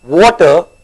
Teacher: my mouth goes round and my teeth is not touching